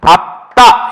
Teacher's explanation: 리을 비읍이 비읍이 됐으니까 리을이 탈락했구나